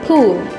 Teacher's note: This aspirated allophone of P has a brief puff of air.